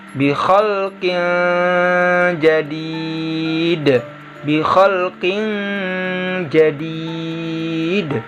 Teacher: Tanwinnya atau kasrotainnya di sini dirubah menjadi bunyi eng